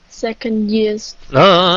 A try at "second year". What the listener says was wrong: Đừng có xin á. second year không xì? Tại sao year này nó không có xì? Thứ hai chứ không phải là số 2, phải không?